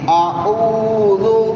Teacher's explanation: او میں عین ہے، وہ گلے سے زور لگا کے پڑھنی ہے، ذو پہ سیٹی کی آواز نہیں دینی، زبان اوپر دانتوں سے لگا کے سیٹی کی آواز کو بند کرنا ہے۔